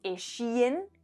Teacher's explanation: También tenemos los sonidos sh y z, como en eshien, que sería salían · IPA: [e.'ʃi.en]